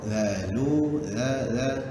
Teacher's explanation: za hujung lidah keluar sedikit